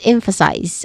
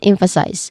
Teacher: it ends with size, the third syllable, which has a clear I diphthong sound and a buzzing sound at the end. So we say it as emphasize.